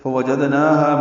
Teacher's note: فوجدناہا میں فاء وا جلدی پڑھنے ہیں، جیم کو دال سے ملانا ہے، دال ساکن پہ قلقلہ ہے، نا ہا دونوں کو برابر دو دو حرکات لمبا کرنا ہے